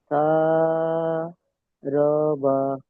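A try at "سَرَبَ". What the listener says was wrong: রটা টান দেবেন না, কারণ দেখেন র এখানে হারাকাত এসছে। শারবা। শিন আলিফ জাবার শা।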